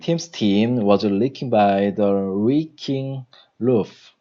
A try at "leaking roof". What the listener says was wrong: L sounds like an R. Leaking